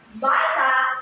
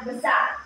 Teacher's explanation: Ngunit, sa basa, ang binigyang diin ay ba. At ang sa basa naman ay sa. Ang binigyang diin ay sa.